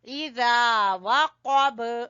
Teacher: गासिकिन इज़ा, जा जबान की नोक और सामने वाले 2 दांतों के सिरे से जाल